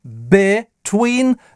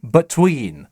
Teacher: Во втором слоге тоже долгое и слово between можно произнести двояко. В первом слоге либо с кратким between, либо between со звуком шва.